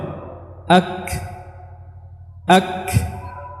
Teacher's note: Adapun secara istilah adalah keluarnya huruf tanpa disertai dengan bergetarnya dua pita suara, ya. Jadi pita suara tidak bergetar, kemudian disertai dengan banyaknya udara yang keluar ketika pengucapan huruf-huruf hamas ini. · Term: hams